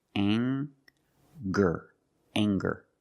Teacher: Let's talk about anger. We have the nasal sound plus the hard G, the G sound. Together, anger.